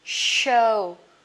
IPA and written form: ʃəʊ (show)